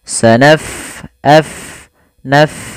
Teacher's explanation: Pada lafal bacaan sanafrughu, fa-nya kita alirkan nafasnya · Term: huruf fa